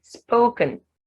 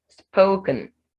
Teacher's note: it's almost as if I'm not saying anything between k and n, but the schwa is there. Because if you don't have the schwa there, it means I'll be saying spoken, spoken, and that's what I'm saying.